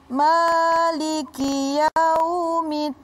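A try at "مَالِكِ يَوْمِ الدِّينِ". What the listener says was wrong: Jadi bukan middin, bukan. Middin, itu disebut syiddah. Ada tasydid situ, ada ikatannya situ. Kalau middin, itu kan enggak syiddah namanya.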